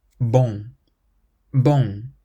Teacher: And this is a sound where your throat closes at the end and the sound has to come out through your nose. Hence, nasal sound.